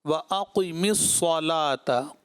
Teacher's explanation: وَأَقِمِ الصَّلَاةَ قوف اور پھر آگے بھی صاد آ رہا ہے، اور صاد کو بھی 2 مرتبہ پڑھا جائے گا کیونکہ تشدید ہے اس کے اوپر